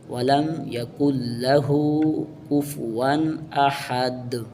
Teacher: وقف میں دال ساکن ہو جائے گی